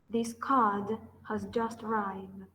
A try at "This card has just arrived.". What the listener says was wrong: Yes, what you are not pronouncing is the ending of arrived.